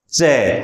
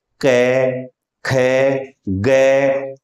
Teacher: चे बोल के देखो तो आपको लगेगा कि जीभ आगे से तालु को स्पर्श कर रही है, जबकि कै, खे, गे में पीछे कंठ के पास आपकी जिह्वा का स्पर्श हो रहा था।